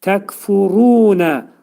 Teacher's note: Məxrəci dilin sonu və dilçəyin axırındadır. Təkfurunə ra hərfi təxvim oxunur, dolu oxunur.